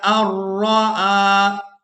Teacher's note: اب یہاں پر ہم نے حمزہ کو را مشدد کے ساتھ ملانا ہے، درمیان میں جو نون ساکن دیکھ رہے ہیں اس کو ہم نے چھوڑ دینا ہے